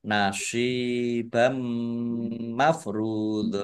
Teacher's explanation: Fathah tanwin bertemu dengan huruf mim idgham bi gunnah, masuk dengan mendengung, yaitu mendengung mim, ditandai mimnya ada tasdidnya. Mim tasdid dibaca gunnah atau mendengung, ditahan kira-kira 2 harokat biar tampak dengungannya. Ra dhammah wawu sukun mat tobi'i panjang 2 harokat.